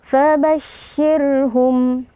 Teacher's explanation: Huruf shin ini dia keluar dari tengah lidah. Lalu di antara sifat yang menonjol adalah sifat tafasyi ya, hamas dan juga tafasyi.